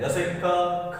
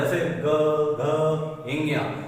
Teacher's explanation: इन्हें बोल रहे हैं तो इनके कोई वाइब्रेशन नहीं हो रहा है, जैसे ग घ इंगिया, तो इनमें क्या हो रहा है? हल्का सा वाइब्रेशन हो रहा है